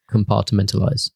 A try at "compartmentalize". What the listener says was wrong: No, you said it wrong. You said it wrong. You added another syllable. Compartmentalize.